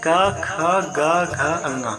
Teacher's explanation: वे व्यंजन जिनके उच्चारण के समय जीभ के पिछले भाग से कोमल ताल का स्पर्श होता है, उन्हें कोमल तालव व्यंजन या कंठ व्यंजन कहते हैं।